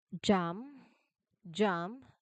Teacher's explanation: You start with the tongue tip seal, then add your voice, and then release it into a into the A vowel sound.